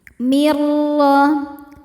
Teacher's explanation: Karena ada nun sukun bertemu huruf ro. Cara bacanya bunyi nun dileburkan ke ro, tidak disertai dengung. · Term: idgham bila gunnah, idgham bila ghunah